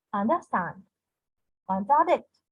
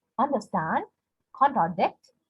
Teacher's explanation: two unstressed syllables followed by a stressed syllable